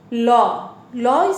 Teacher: ল ল স্পর্শ, ল আমরা ক্লাস 6-এ পড়েছি, ল হচ্ছে পার্শ্বিক ধ্বনি, দন্তমূলে স্পর্শ করে দুই পাশ দিয়ে বাতাস বের হয়ে যায়, তাই এটিকে পার্শ্বিক ধ্বনি বলা হয়। তো ল দন্তকে স্পর্শ করে, লটাও দন্তধ্বনি।